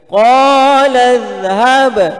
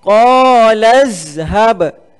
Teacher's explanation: Huruf za lidah terkeluar. Pastikan lidah kita, ujung lidah kita terkeluar sedikit. Jangan sampai terlebih.